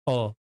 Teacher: अ जो होता है जिह्वा के ये मध्य भाग से उच्चरित होता है